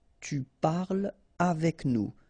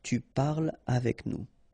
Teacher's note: So no liaison here between parle and avec